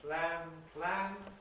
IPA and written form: plæn (plan)